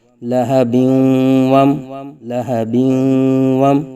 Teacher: وصل میں با کے دو زیر کی تنوین کو واو کے ساتھ ملا کے پڑھیں گے ، با واو دو زیر بیوں، واو میم زبر وم، لہبیوں